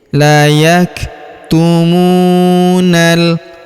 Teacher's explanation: Huruf kaf berharakat sukun. Kita berikan hembusan tipis.